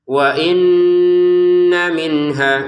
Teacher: Nun nun tasdidnya kita dengungkan ya dua harakat. Wa inna tapi langsung ke mim.